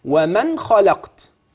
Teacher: الاظهار ياتي بدون سكته